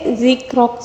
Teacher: زال کو بالکل نرمی سے پڑھیں گے اور را کو پر پڑھیں گے، اور وقف میں اور جو ہے ساکن آئے گا، ٹھیک ہے۔